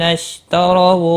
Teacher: را زبر کی وجہ سے پر پڑا جائے گا